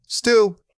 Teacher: The movement should be smooth and consistent. Don't let your jaw drop too much. Keep the central focus on that quick neutral vowel.